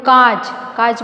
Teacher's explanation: जैसे एक अगर शब्द अगर मैं बोलूँ कांच, कांच बोलते समय हमारा मुंह और नाक दोनों से आवाज़ निकलती है। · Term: चंद्रबिंदु